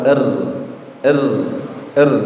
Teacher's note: ro tarqi ya itu sifat ro yang berupa takrir atau getaran jadi arra itu memiliki sifat namanya takrir jadi getaran getarannya huruf ra itu ada dua